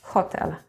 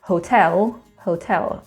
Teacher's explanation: We put the stress on the second from the end syllable.